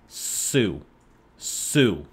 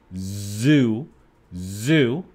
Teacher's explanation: For example, if you place your hand on your throat and say a word like Sue, Sue, the name Sue, you feel like there's no vibration. But if you say Z-O-O, zoo, zoo, you feel that there is vibration.